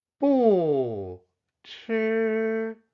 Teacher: The combination of the 不 and the first tone syllable does not change tone.